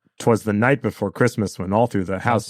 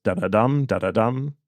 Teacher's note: it's two unstressed syllables and a stressed one